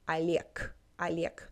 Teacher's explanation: When the consonant is at the end, it becomes devoiced. So not a strong G, but more like a soft K.